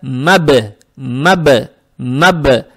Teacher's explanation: буква ба с сукуном, получается ба калкала, здесь ба надо подчеркивать